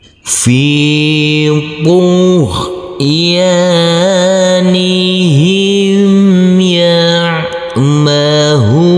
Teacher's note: Huruf ain yang bersukun ini harus kita alirkan